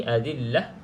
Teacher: berhenti saja dengan bunyi huruf ha ha mati